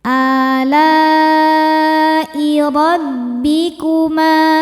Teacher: Sama-sama ada pada kata alai. Maka la-nya panjang, boleh 4 boleh 5 harokat. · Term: mad wajib muttasil